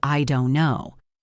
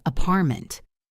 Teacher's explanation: Often we don't say don't with a clear t. · that sudden silence or a blocked sound where a T should be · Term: glottle stop